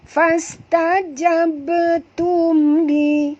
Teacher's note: Bar sini mati di tengah-tengah kalimah, qalqalah sughra, ya. Fastajabtum li, mim mati bertemu lam, tak boleh dengung, izhar syafawi lagi.